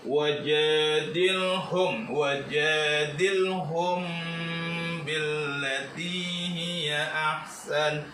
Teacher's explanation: lam matinya harus dibaca jelas karena ini dalam hukum lam mati yang masuk dalam kata fi'il amr